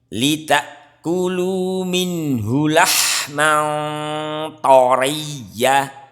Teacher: Lahman to, ini ada huruf isti'la. Jikalau ikhfa hakiki, di saat bertemu huruf isti'la, huruf yang tebal, yang tafkim, kita harus mentafkimkan dengungnya.